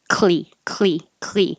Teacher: If you release the K, there's a chance you could have an extra sound come in between the K and the L. So basic, while my tongue is coming back for my K, the front of my tongue is going up for the L at the same time. So it's like clee, clee, clee.